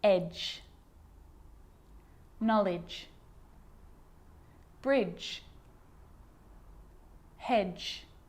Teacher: the d and the g combined together produce the j consonant sound · a d can be very quiet not quite silent but very quiet in front of a g